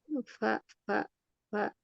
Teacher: Fa ini asyafatan ya, keluar dari bibir bawah bagian dalam yang basah, bertemu dengan ujung gigi seri atas